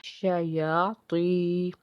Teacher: آگے تو ہے حرف مستعلیہ کا حرف ہے، اس کو پر پڑھیں گے · شین جو ہے وہ حرف شجریہ کا حرف ہے، جب اس کو پڑھتے ہیں آواز منہ میں پھیلتی ہے